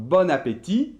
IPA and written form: bɔnapeti (GOOD APPETITE)